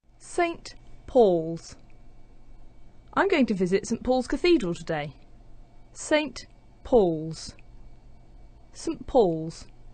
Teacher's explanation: the t sound is disappearing, that's elision. That puts the n sound next to the p, and it starts to sound like a m